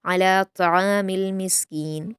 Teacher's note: त्वा पर ज़बर होता है तो उसको पुर पढ़ते हुए त्वा के ज़बर को पेश जैसी आवाज़ नहीं करनी होती। कुछ इस स्टूडेंट्स इसको त्वामी बोलते हैं, तो त्वामी नहीं होता वो।